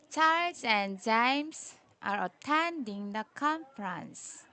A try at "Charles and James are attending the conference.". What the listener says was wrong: Okay, 15.